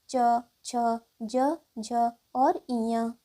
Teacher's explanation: च वर्ग के सभी व्यंजन तालव्य ध्वनि से बोले जाते हैं